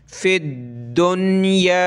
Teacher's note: फ़िद्दुन्या, फ़ा दाल ज़ेर, फ़िद दाल नून पेश दुन, दाल को सख्त करेंगे तशदीद की वजह से